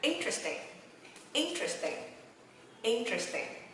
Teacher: nó không nhấn âm interesting, nhấn âm 3 nha, mà nó nhấn âm 1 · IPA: /ˈɪntrestɪŋ/